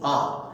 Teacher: এছাড়াও আ হচ্ছে, তুমি যখন উচ্চারণটা করছো আ, জিভটা টানা হয়ে ভেতরে চলে গেছে। জিভ দেখো টানা হয়ে ভেতরে চলে যাচ্ছে। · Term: পশ্চাৎ স্বর